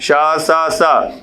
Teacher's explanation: साथ ही साथ ऊष्म व्यंजन के जो तीनों शा होते हैं, शा सा सा, ये भी अघोष होते हैं।